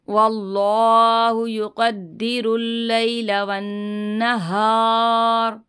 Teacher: यहाँ पे गुन्ना करेंगे, अल्लाह के लाम को पुर पढ़ेंगे